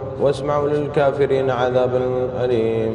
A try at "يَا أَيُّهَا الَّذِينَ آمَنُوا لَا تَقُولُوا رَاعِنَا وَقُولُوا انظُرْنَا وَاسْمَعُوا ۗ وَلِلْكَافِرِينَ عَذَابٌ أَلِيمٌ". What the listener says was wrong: واسمعوا، وقف عليه. بس وقف على واسمعوا، في العلامة شايفة اللي فوق، ها خلاص هذه علامة وقف. واسمعوا.